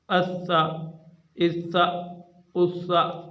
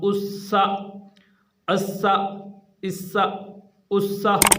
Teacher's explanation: اب یہ سین ہے، سین کے اوپر سٹی کی آواز ہم نے نکالنی ہے۔